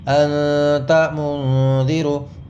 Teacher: اخفاء ہوتا کیسے کہ ناک میں آواز کو لے جا کر پڑھیں گے۔